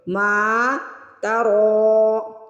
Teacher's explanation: را کو یہاں پہ موٹا بھی پڑھنا ہے، را کو کھینچ کے بھی ادا کرنا ہے